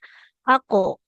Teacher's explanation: bunyi pantulannya itu lebih dominan mendekati ke hurufnya dalam harakat fathah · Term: qalqalahnya